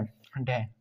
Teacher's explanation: तो मूर्धन्य वर्ण है हमारा ढ